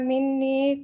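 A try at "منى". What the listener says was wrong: Mina bukan mini. Kalau mini nggak ada mina.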